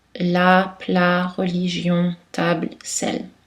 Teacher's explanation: une consonne liquide alvéolaire et voisée · la pointe de la langue s'élève contre les alvéoles, c'est-à-dire juste derrière les dents, et l'air passe seulement par la cavité buccale et les cordes vocales vibrent en général, mais il y a des exceptions.